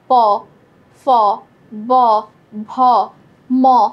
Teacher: একটা জিনিস লক্ষ্য করো, প ফ ব ভ ম, এই যে প ফ ব ভ ম এগুলো কিন্তু ঠোঁট ছাড়া উচ্চারণ করা সম্ভবই না। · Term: ওষ্ঠ ব্যঞ্জন